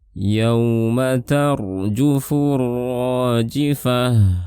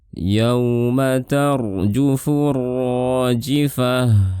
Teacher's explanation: Kemudian pada ayat ke-6 di sini ada huruf lin, ro sukun sebelumnya fathah tebal, dan di sini ada alif lam syamsiyah, kemudian ada alif, di sini mad tabi'i, dan di sini ada ta marbutah di akhir. Ini dibaca suaranya seperti suara ha, suaranya kita tahan.